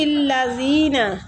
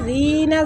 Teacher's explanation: زال کو نرمی کے ساتھ سیٹی نہیں آنی چاہیے اور کھینچیں گے ، یا مد بھی ہو رہا ہے زی کے آگے، ٹھیک